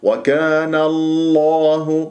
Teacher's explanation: ونون مفتوح كان ن مرققة قبل اسم الجلال الله، تفخم اللام من اسم الجلال الله، نقول وكان الله بهذه الطريقة.